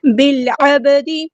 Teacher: با ساکن ہے تو یہاں پہ قلقلہ ہو رہا ہے